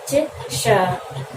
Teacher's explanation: हमारी जीवा मूर्धन्य आकार की हो जाती है और वायु घर्षण करते हुए बाहर निकलती है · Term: मूर्धन्य श